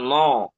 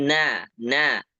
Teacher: huruf nun tipis nabudu jangan no tapi na